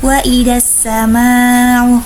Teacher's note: alif lam bertemu dengan salah satu huruf syamsiyah yaitu shin maka dinamakan dengan alif lam syamsiyah, dan biasanya alif lamnya tidak terbaca. Sedangkan ma-nya sendiri yaitu mad wajib mutasil karena mad tabi'i bertemu dengan hamzah dalam satu kalimat, biasanya 4-5 harokat.